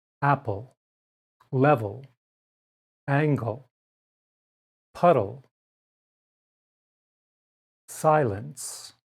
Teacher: notice that these unstressed syllables with the final l sound may be spelled e l or l e but they are pronounced the same apple level angle puddle silence number three i as in april